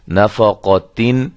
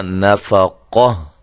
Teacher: اب ہم اس پہ وقف کرنا چاہتے ہیں تو اس کا طریقہ کار کیا ہوگا کہ اس گولتا کو ہم ختم کر کے صرف ہا اور وہ بھی ساکنہ ہم لگا دیں گے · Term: ہائے ساکنہ